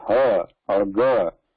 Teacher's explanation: When you say ha or ga, there is vibration.